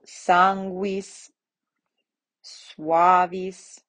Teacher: So sanguis, suavis, right? So you can hear that kind of W sound that's coming from U when it's combined with QU, GU, or SU, right? Sanguis, suavis.